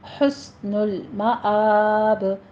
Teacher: سین پہ سیٹی کی آواز لے کر آئیں۔ معاب میں معاب نہیں ہے، معاب، حمزہ کی کھڑی زبر کی آواز لے کر آئیں۔